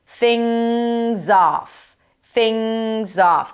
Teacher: And then when we connect things and off, the z sound of things. Yes, it's an S, but pronounced as a Z becomes the beginning of the next word